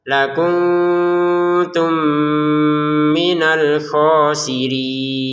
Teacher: Ternyata di depannya ada mim. Maka mim yang pertama dimasukkan pada mim yang kedua sehingga terbacanya dengan dengungan.